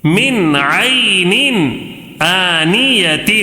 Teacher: نون کو ظاہر کر کے بغیر غنہ کے جلدی پڑھیں گے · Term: اظہار